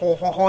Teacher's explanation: it's this low nasal, like guttural